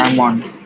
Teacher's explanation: That's how most people say. But the L is silent. From today, put that L to sleep.